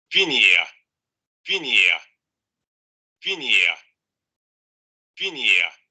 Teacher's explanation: Anterior cerrada, no labializada